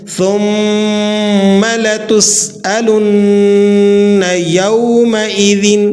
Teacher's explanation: ثم یہاں پر سین ہے، سین کو آپ نے باریک سیٹی کے ساتھ ادا کرنا ہے